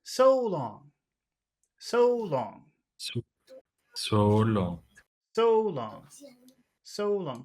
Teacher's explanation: we'll start high but we'll finish low because most phrases end low